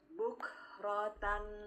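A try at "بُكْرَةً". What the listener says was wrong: Bagus, Masya Allah. Barakafik.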